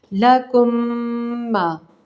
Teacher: اس میم کے اوپر تشدید ہوگی۔ لکم، ہونٹوں کو بند کریں گے، غنے کا اظہار دیکھیں ناک کے بانسی کی طرف تھوڑا سا آپ کو غنہ محسوس ہوگا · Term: ادغام